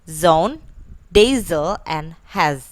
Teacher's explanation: Next is Z, which is voiced, alveolar, and fricative.